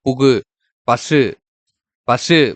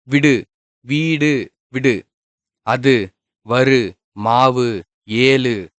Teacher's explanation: தனிக்குறில் எழுத்தை அடுத்து வரும் வல்லின உகரங்கள் வந்து ஒரு மாத்திரை அளவுக்கு முழுமையா வந்து ஒலிக்கிறது. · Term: முற்றியலுகரம்